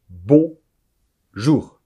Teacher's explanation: attention aux nasales de ne pas prononcer un N